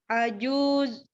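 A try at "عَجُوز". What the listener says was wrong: Lebih panjang bacanya, coba bawa.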